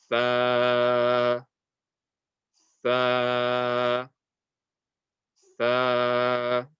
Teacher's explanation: Fatha before alif will be stretched, so the sound of the fatha will be stretched. This will be tha, tha, tha.